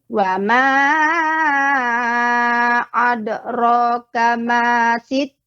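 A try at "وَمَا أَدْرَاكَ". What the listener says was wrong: Ya, pada dal yang berkolkolah bukan ada, tapi adra. Wa ma adra.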